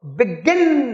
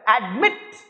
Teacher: गिन पे जोड़ है. एडमिट, मिट पे जोड़ है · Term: स्ट्रेस